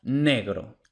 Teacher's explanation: La G de negro es aproximante, por supuesto.